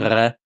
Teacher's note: Entonces también donde pronunciamos la L, para que nos entendamos. Entonces, en francés se pronuncia con la parte trasera de la lengua yendo hacia atrás, hacia el velo del paladar. A veces vibra, a veces no.